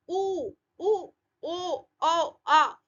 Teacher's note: ये कंठ के आसपास से आवाज आ रही है तो पीछे वाले स्वर हो जाएंगे। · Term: पश्च स्वर